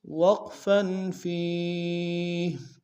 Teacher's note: فیہ میں یا مدہ ایک اسم دار میں کھینچیں گے، ہا کو وقف میں جزم سے بدلیں گے۔